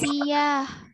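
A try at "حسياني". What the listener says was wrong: Hissiyani, bukan hissiyah saja, hissiyani. Hissi dan hissi.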